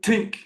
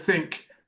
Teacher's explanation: in Ireland, for example, they might say tink instead of think, and that's another viable way of saying it.